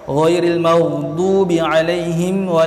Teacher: makhraj hurufnya berpanjangan daripada tepi pangkal lidah hingga tepi hujung lidah. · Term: istitalah